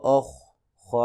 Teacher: حروف مستعلیہ میں سے ہے، اس کو موٹا کریں گے